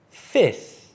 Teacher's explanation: So this F actually doesn't make much sound, so you can pretend there's no F and just say F-I-T-H, which is fifth.